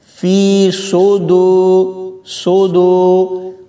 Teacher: سواد کی آواز تھوڑی سی موٹی ہوتی ہے اور سین کی باریک، لہٰذا ہم نے یہاں پر سواد پڑھنا ہے۔